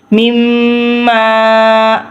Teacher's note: مما پہ گناہ آ رہا ہے کہ میم اور میم کے ساتھ مل رہی ہے اور اس اوپر تشدید ہے، اس کی وجہ سے ہم گناہ کریں گے، اور خالی الف کی وجہ سے ہم لمبا کریں گے۔